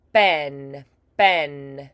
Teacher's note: we're going to bring those lips together, and pop them open for a stop plosive